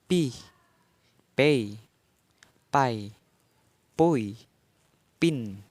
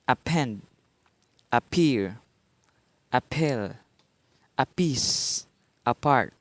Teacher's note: Voiceless bilabial stop. Initial.